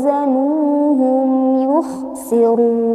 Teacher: yukhsirun ini adalah bacaan yang salah bacaan yang tepat adalah dengan memasukkan wau sukun ke dalam wau yang kedua sehingga seakan-akan seperti ww bertasdid tanpa ada dengung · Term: idgham mutamilain